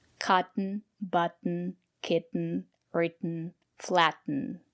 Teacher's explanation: We pronounce the letter T as a stop T.